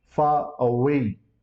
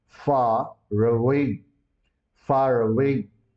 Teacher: because away is having a vowel initial sound so R would be added and we have to call it far away far away the